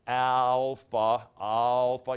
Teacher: You'd think that it's pronounced alpha because we go alphabet. Well, no, it's actually pronounced more like an ah sound, as in father, sort of a shorter sound. Now, I've got a box around it because that is a short sound as opposed to a longer sound.